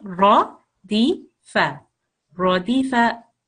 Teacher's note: it's slightly thicker when it's got the ra with the fatha on the top